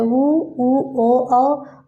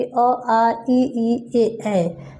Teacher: ओठों की आकृति के आधार पर वृत्तमुखी होता है ऊ ओ औ, अवृत्तमुखी अ आ ई ए